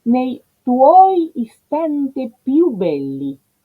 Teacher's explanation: più es en efecto una sílaba única en la cual hay una semiconsonante